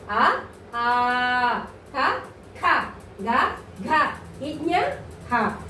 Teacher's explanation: కంఠ్యాలు అంటే కంఠం నుంచి పుట్టుకొచ్చిన అక్షరాలు కాబట్టి వీటిని కంఠ్యాలు అంటారు.